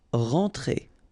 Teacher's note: you combine the two letters here, you get the nasal en